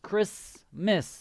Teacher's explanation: the t is silent